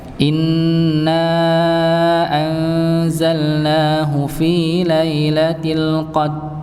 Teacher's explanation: Jadi rnya tidak ke kebaca Nah ini kesalahan ngih tetap harus di dibaca dengan ditebalkan Qadr